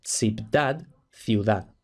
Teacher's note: aparece muy frecuentemente en la Edad Media este tipo de B al final de la sílaba que luego se convierte en una u en español actual